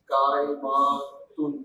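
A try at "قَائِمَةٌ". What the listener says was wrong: लंबा नहीं करना, कायमातुन, मरियम उन्नी, मरियमु कायमातुन, हाँ जी, मरियम ने रोजा रखा हुआ है, मरियमु साइमातुन, अब इसका मतलब ये नहीं कि मरियम साइमा है, ठीक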